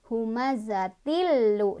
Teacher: Nah, di sini juga kita sama bertemu dengan idgham bila gunnah karena ada tanwin kasroh bertemu dengan lam. Cara bacanya tanwin kasrohnya langsung masuk ke huruf lam sambil tidak berdengung